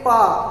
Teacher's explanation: तो आपके जो दोनों ओष्ठ हैं वह आपस में टच होंगे। बिना टच हुए हम पा का उच्चारण नहीं कर सकते हैं। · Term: स्पर्श व्यंजन